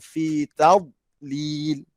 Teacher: Penuhkan dan jangan bunyi de. Kalau bunyi de tu maknanya dia jadi qalqalah, sedangkan tidak ada padanya sifat qalqalah.